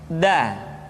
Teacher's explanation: Da diucapkan dengan menyentuhkan ujung lidah kita dengan bagian gusi-gusi dua gigi seri bagian atas. Da. Nah, kesalahan yang sering dilakukan adalah menyentuhkan ujung lidah dengan langit-langit. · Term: huruf da